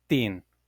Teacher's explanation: Patois doesn't really have the th sound, so a word like thin would be pronounced like thin.